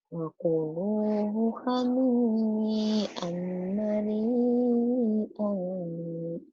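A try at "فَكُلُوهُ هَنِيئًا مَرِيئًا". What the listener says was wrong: kamu teh kalau wa teh sering ketukar sama pak sama wa. Itu kan bukan wakulu, fakulu. Fa. Kedengarannya kayak wa.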